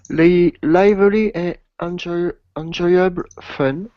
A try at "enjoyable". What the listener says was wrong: By the way, careful the pronunciation. Enjoyable. It looks like en, but that would be French. In English, in. Enjoyable.